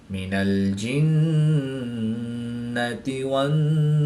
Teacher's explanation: وقف کی حالت میں یہاں پر مد عارض ہوگی، 2 سے 3 الف تک کھینچ کر پڑھیں گے۔